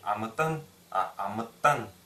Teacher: именно как две как сдвоенная Т